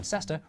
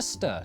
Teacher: locals who were too busy to pronounce all the syllables in sester reduced it to stir to save time